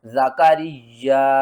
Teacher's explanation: ذال زبرزا، کاف زبر کا، را یا زیر ری، یا الف زبر یا، زکریا۔ یا کے اوپر ہم نے سختی بھی کرنی ہے اور 2 بار بھی پڑھنا ہے۔ مشدد لیٹر ہے، اس میں 2 یا ہے، ایک یا ساکن ہے اور دوسرا یا متحرک ہے۔